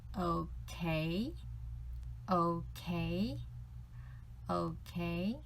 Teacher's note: O is third tone, K is second tone.